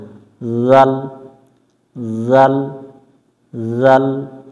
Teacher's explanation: জাল শক্ত করা যাবে না জিহ্বার আগা থেকে এটা নরম হবে